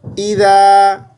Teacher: اذا اے کے ساتھ نہیں پڑھنا، ای کی آواز جیسی آواز ہے